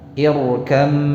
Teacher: Ya, memang tulisannya ada ba-nya, tapi ketika dilafazkan, coba. Ini mim musyaddadah. Mim yang bertasydid. Jadi dipanjangkan durasi gunnahnya. Ditahan dulu, dengungkan dengan sempurna, ya, dengan jelas.